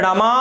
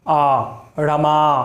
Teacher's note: last में आ, मात्राएं बढ़ जाती है, समय बढ़ता है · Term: दीर्घ